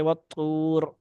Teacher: वत्तूर में वाव सानी पुर पढ़ी जाती है